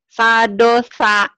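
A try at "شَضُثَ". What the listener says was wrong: Sadosa. Shin. Shadosa. Jadi sadosa. Shadosa. Bukan sadosa nih ya bibirnya. Shin. Shadosa. Shadosa.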